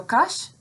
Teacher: So kash, the very first syllable here, ends in a consonant and therefore is counted as heavy, even though the vowel in this syllable is short